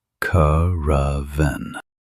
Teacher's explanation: Notice the stress on the first syllable.